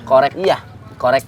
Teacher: Kalau yang kaf itu di pangkal lidah di belakang.